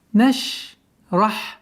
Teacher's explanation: Отличительной чертой звука шин является, что у этого звука есть свойство тафаши, то есть произношение медленно ш. Резкое произношение категорически запрещается, потому что аннулируется вот это свойство наш.